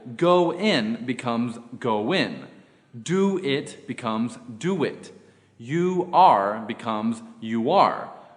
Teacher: becomes I ate lunch rule two o o plus a vowel when the vowels o o and ow are followed by a vowel in the second word a w sound is inserted in order to link them